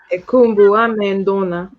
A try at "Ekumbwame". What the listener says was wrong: Because here you have a vowel contraction. U and A, yeah? Let's go Kumbwame.